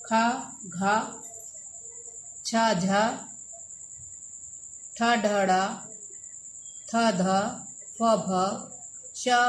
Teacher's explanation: महाप्राण: जिन वायु के उच्चारण से मुख से श्वास वायु अधिक मात्रा से निकलती है उन्हें महाप्राण कहते हैं